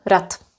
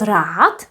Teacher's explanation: Pronounced with t, rad. Not rád, but rad.